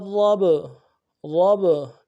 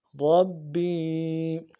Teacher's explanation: با چونکہ قلقلہ میں سے ہے تو پہلا با تجدید کی وجہ سے پہلا با جازم ہے، سکون ہے تو قلقلہ کریں گے۔ را با زبر رب، رب، با یا زیر بی، یا مدہ ہے، ایک الف دار میں کھینچیں گے۔